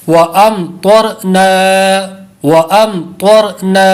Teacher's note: را ساکن سے پہلے زبر ہو تو را ہمیشہ پر ہوتا ہے، اس لیے را کو پر پڑھیں گے، طا کو بھی پر پڑھیں گے.